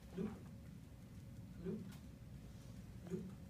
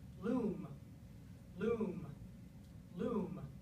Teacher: Well, we write them both as long vowels, but in fact, when you make them, if we look at the actual amount of time you produce them, the one in loom is actually much longer. And that's because it's coming before a sound that has vocal folds vibrating, whereas loop is not.